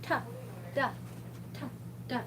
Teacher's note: So if you say T or duh in English, you can feel the tip of your tongue hit on the roof of your mouth right behind your upper teeth